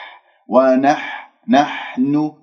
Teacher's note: هذه الحاء الساكنة رقيقة حتى لا أخرج كمية من الهواء تأثر على صوت الحاء